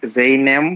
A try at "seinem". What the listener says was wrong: না, আই হবে না, এ ই পাশাপাশি আয়ের মতো উচ্চারণ। ডিপথন্সটা মনে করুন, ফার্স্টে ডিপথন্সটা যেটা দেখেছিলাম, মিট সাইনেম, আই